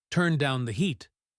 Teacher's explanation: the D in down linked to the H in heat